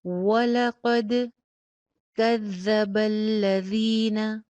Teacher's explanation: واو کے اوپر ہونٹ میکسیمم گول، لام کی زبر کنٹرول کر کے، ولا قد نہیں کرنا، وَلَقَدْ كَذَّبَ الَّذِينَ، زال کا مخرج چیک کیجئے، کذا میں بھی ہے، الذین میں بھی ہے، سیٹی کی آواز نہیں آئے گی.